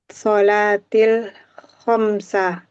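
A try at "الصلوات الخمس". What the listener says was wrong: Salawatil khamsi. As-salawat. Ya, ada wawunya itu. As-salawatil khamsi.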